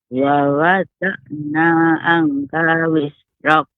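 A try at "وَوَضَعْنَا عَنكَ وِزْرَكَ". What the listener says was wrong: Anka wizrak. Tadi Nek membacanya angka wizrak. Seharusnya agak lebih lama, Nek, diberi ikhfa. Ikhfa ini dipanjangkan juga disertai dengan gunnahnya. Anka wizrak. Wa wada'na anka wizrak.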